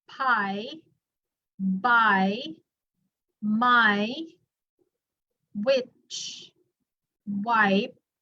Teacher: My lips touch together, right? The upper lip and then the lower lip, they somehow touch together. So that's why it's bilabial.